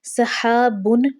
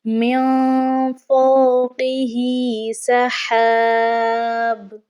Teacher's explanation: با کے اوپر جو تنوین کی علامت ہے اس کی ایک حرکت کو ہم نے گراتے ہوئے ایک ہی حرکت کو پڑھنا ہے، جیسے کہ ہم نے سحابن نہیں پڑھنا، وقف ہم نے کرنا ہے، ہم نے کیا پڑھنا ہے من فوقہ سحاب، ٹھیک ہے، ہم نے یہاں پر وقف کرنا ہے۔